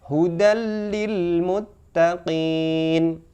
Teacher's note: Lam bertasjid, bacaan bukan bacaan gunnah. Ada sering kita mendengarkan ketika membaca tanwin bertemu lam, hukum tajwidnya adalah idgham bi la gunnah.